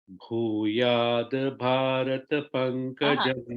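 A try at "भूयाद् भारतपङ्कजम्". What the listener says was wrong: Bhuyad, not to say full, it is half. Bhuyad bha.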